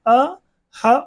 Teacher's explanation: अ ह और विसर्ग ये कहां से उच्चारित होते हैं कंठ से उच्चारित होते हैं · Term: कंठ वर्ण